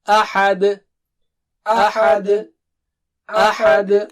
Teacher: احد حمزہ صاف ہو، ہا صاف ہو، اور آخر میں قلقلہ